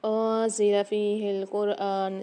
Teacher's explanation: زا کی آواز کو واضح کریں گے، اس کو سختی اور جماؤ کے ساتھ پڑھتے ہیں